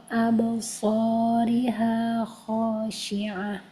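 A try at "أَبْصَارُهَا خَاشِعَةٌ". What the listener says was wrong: Pakai doma abasoru. Abasoru. Itu baca kasrah.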